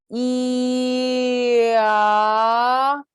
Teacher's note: our tongue moves from the front to being all the way relaxed in our mouth, and our mouth shape moves from closed to open.